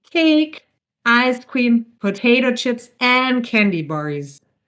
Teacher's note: So this, as you can see, this enumeration starts with cake and ends with bars. So it goes up, up, up the intonation and falls with bars. · So we use non-final intonation in a sense that the voice raises at the end of each item.